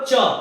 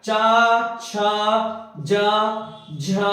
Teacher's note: तालव्य व्यंजन यानी कि जिन व्यंजनों का उच्चारण करते समय हमारे जीभ जो है वो तालू पर जाकर टकरा जाए · आप बोलोगे च तो जीभ जो है वो आपके तालू पर टकराएगी